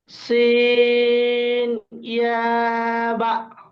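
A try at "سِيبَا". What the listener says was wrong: বা একালিপ টান আছে।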